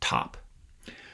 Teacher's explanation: So you release the T, and then air starts to flow out between your vocal folds, not making a sound, but it kind of sounds like a H, like an H sound. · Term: aspirated T